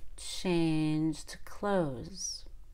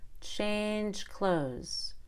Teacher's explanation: we let out a little air on that D. So it's very clear that we mean the past tense.